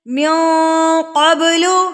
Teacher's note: اقفا ناک میں آواز کو چھپانا ہے، نون ساکن کی آواز کو ناک میں چھپانا